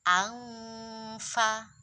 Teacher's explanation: Semisal nun sukun bertemu fa, angfa. Nah, itu kan jadi ng.